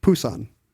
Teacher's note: There's no puff of air, but it's still closer to our unvoiced p than it is to our unvoiced b.